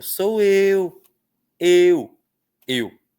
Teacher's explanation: O e é forte. O U é fraco. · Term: ditongo